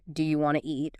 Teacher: Sometimes sounds are dropped entirely, like the T often disappears in want to.